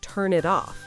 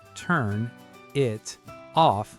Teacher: In natural speech, that sounds like turn it off, all connected, no gaps between the words. So, the N in turn links to the I in it.